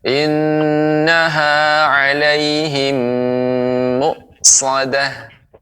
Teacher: innaha, ya, ditekan dua, jadi dua harokat